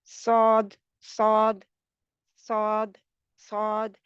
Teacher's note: स्वाद के लिए ज़ुबान पीछे से उठी होती है, ज़ुबान की जड़ तालू को लगती है, और लेकिन ज़्यादा नहीं लगती, यानी ज़्यादा नहीं लगती।